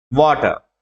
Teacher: వాటర్ ఈ వా మీదే పడుతుంది, కాబట్టి ఈ ఫస్ట్ సిలబల్ మీద పడుతున్నట్టు లెక్క